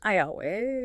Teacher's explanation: The intrusive J sound which sounds like Y comes in after high front vowels.